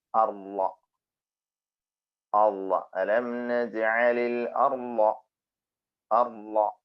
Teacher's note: നമ്മള് അർള സ്വാദിന് പുള്ളിയിട്ട ളാദ് പറയുമ്പോൾ നമ്മുടെ നാവിന്റെ പാർശ്വഭാഗം തന്നെയാണ് മുകളിലെ അണപ്പല്ലിൽ ടച്ച് ചെയ്തിട്ടുള്ളത് എന്ന് ഉറപ്പുവരുത്തിയാല് നമുക്ക് പറയുന്നത് സിമ്പിളായിട്ട് അത് മനസ്സിലാക്കാൻ പറ്റും.